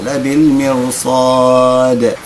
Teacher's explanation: وقفنا عند الدال، نقف عندها ساكنة وبالقلقلة